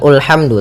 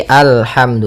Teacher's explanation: maka apabila ada alif lam di awal bacaan, maka a-nya dibaca dengan fathah. Alhamdu. Nah, di sini bukan ulhamdu tapi alhamdu.